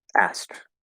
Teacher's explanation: the k will basically turn into a t